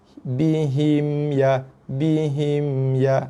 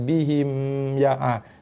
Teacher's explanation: mim yang ada baris mati, mim yang tak dengung. Okey, kita zahirkan, jelaskan bunyi mim mati tu.